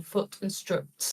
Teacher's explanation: So in like northern English accents, there's no separation between those two vowel sounds. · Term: foot strut split